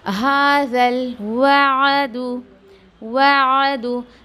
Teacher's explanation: आइन के आवाज़ को ठहरा के निकाल रही हूँ आराम से हलक में, ना कि मैं उसको मद दे रही हूँ